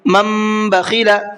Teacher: یہ نون نہیں پڑھا جائے گا بلکہ اب یہ میم پڑھا جائے گا